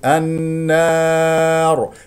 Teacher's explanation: النار خطا لقد جعلت الالف ممالا افتح الفم في الالف النار نقف على راء ساكنه قبلها مفتوح اذا تكون مفخمه بالمد العارض للسكون لا نجع طبعا حركتين الست حركات ولا